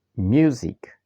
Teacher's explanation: You can see the stress is on the first syllable